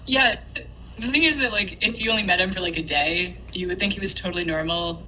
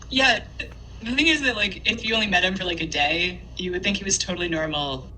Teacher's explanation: lowering the pitch at the end so it just kind of descends down to the bottom of the speaker's range